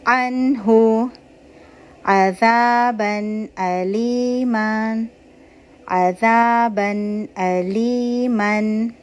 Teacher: one count کا natural غنہ ہوگا، لمبا غنہ نہیں کرنا ہے، پاز نہیں دینا ہے